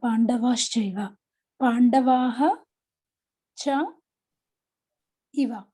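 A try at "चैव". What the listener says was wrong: Not Iva. Chaiva, the I is a what word? It's a Vriddhi letter. It's a Vriddhi letter. If it is Iva, then Guna letter will be there. So Pandavaha plus Cha plus Cha plus Eva.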